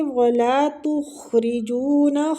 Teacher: خواہ مستعلیہ پور پڑھیں گے اور را زیر کی وجہ سے باریک پڑھیں گے۔ جونا، وہ مد ہو رہی ہے، کھینچیں گے۔